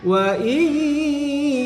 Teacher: nun sukun bertemu dengan Ya harus tekan dan ditahan selama dua harokat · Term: idgham bighunnah